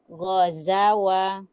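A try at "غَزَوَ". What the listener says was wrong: Mana panjang, mana pendek? Nah, jelaskan sedikit lagi zai-nya ya. Za. Ghazawa. Za. Tinggal dilatih agar tidak menyenggol. Ghaza. Ghazawa. Lagi, lebih rileks lagi. Ghazawa. Hati-hati menyenggolnya itu di zai atau menyenggolnya di waw. Contoh menyenggol di zai tadi ya yang Anda contohkan. Ghaza. Menyenggol di waw. Ghazawa. Zawwa. Ghazawa.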